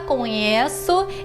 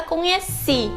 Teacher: na palavra conheço é no e que está no Tônico e conheci é no SI que está no tônico